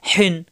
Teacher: কণ্ঠনালীর মাঝখানে চাপ দিয়ে হিন। প্রথম পেশ হায়ের সাথে হু, পরের পেশ নুন সাকিন হুন, হু নুন সাকিন হুন, হা দুই পেশ হুন, হান হেন হুন।